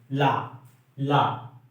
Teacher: जीभ जो है तालु से छूता है, अब बगल से हवा निकल जाती है, इसीलिए पार्श्विक व्यंजन भी कहते हैं। ला को पार्श्विक व्यंजन कहते हैं।